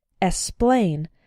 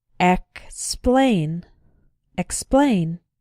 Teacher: Be careful in words like explain to include the K sound. Sometimes students pronounce it like esplain, but that's not correct.